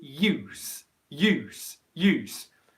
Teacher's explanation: you get a yeah sound in front of the actual ooh